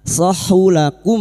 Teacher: mim sukun bertemu wawu idhar safawi, mim sukun dibaca jelas tanpa mendengung